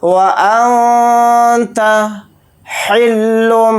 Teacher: نون کی آواز کو ناک میں چھپا کر اخفا کے ساتھ اس طرح سے پڑھیں گے۔